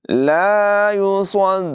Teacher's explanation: स्वाद की आवाज़ पुर होगी, आइन की आवाज़ भी नुमायां करेंगे।